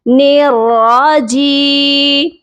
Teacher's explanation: اب یا ساکن سے پہلے زیر ہے، یہ والی یا مدہ کی ہے. اس جی کو ہم یا کے ساتھ لمبا کر کے پڑھیں گے